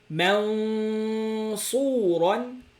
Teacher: So it is not true ghunna. It is more like literally floating tongue.